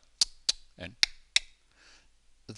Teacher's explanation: Clicks, for example, which are used in some Southern African languages, clicks like tsk, tsk, and tsk, tsk, they are made with the air coming in, and the air doesn't go into your lungs, it only goes into your mouth. Essentially, you suck the air into your mouth and release the suction through your tongue.